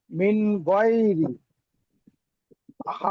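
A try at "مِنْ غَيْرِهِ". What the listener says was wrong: মিন গয় রি টান দিচ্ছেন ভাই, হি কিন্তু টান হচ্ছে না। মিন গয় রি হি।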